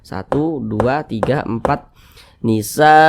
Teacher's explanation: mad wajib muttasil panjangnya mad wajib itu boleh empat harakat boleh juga Li harakat empat harakat misalnya atau kira-kira empat ketukan